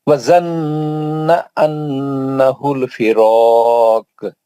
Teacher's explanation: دونوں غنہ ہے نا، زنہ پہ بھی غنہ ہے، انہو پہ بھی غنہ ہے